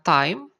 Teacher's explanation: ada suara ai ya, ai gabungan a dan i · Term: diftong